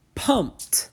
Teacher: P is one of those sounds that typically has us make the ed say t. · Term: T sound